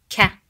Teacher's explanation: it's very close to the french r sound it's not gah it's deeper than the english k sound ka in arabic so it's kind of closer to the q